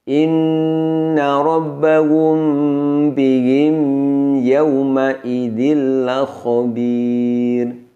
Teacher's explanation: mim sukun bertemu dengan Ya namun didengungkan lama